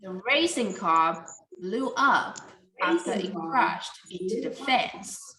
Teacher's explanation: the main idea you want to say is blow up so the up here need to be stressed